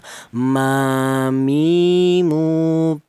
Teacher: keluarnya huruf berasal dari kedua bibir yang rapat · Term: huruf mim